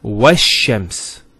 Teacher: And then what that means is that these sun letters, the ta, the tha, dal, the ra, zay, and so on, if they come as a first letter of the word, after the L is being added, there'll be a shadda on the letter, and the lam will not be pronounced